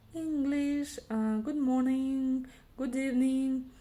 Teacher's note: вот этот «н» и «g» на конце, да, или в середине слова в слове English дают вот этот вот сонорный звук «н» казахского языка